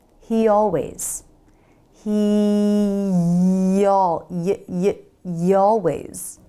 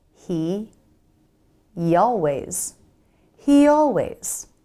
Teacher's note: The Y is a glide consonant, so we can use it to smoothly glide between words.